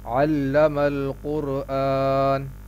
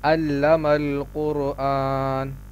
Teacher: علم القرآن، یہاں اس بات کا خیال رکھیں کہ عین اپنے مخرج سے صحیح طور پر ادا ہو۔ عین کا مخرج یہ ہے کہ حلق کے درمیانے حصے سے عین ادا ہوتا ہے